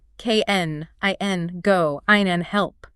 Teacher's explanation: the word can is a grammatical helper. It is unstressed. The vowel collapses into that tiny schwa sound we just discussed. It sounds like ken, i, n, go, n, help.